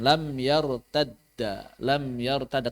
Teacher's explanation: dalnya disukunkan, masuk ke dalam dal kedua. Karena sukun ketemu sukun, maka dal yang keduanya yang difathahkan. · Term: diidghamkan